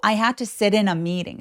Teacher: 구동사는 강세를 줄 때 어디에 주냐면 두 번째 단어가 이 전체 의미를 결정하기 때문에 두 번째 단어의 강세를 살짝 더 밀어줘요 · sit in 하면서 in에다가 약간 강세를 밀어주는 그런 억양을 만들어낸다. 기억해 주세요. 그리고 sit in 할 때 이 t가 모음 사이에 끼어 있죠.